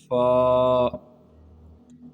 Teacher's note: یہ پہلا فا، حروف شفویہ کہتے ہیں ہونٹوں سے ادا ہونے والے حروف کو۔ فا کا جو مخرج ہے اوپر کے دانتوں کے اندرونی کنارے اور نچلے ہونٹوں کے تر حصے سے ادا ہوتا ہے،